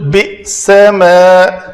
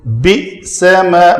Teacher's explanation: یہاں پہ حمزہ ساکن ہے تو اس کو جھٹکے سے ادا کریں گے